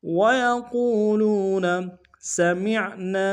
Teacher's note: مین کو عین کے سامنے لائیں گے، عین کی گہرائی سے ادا کریں گے، نون سے الف مدہ ایک اندار میں کھینچیں گے۔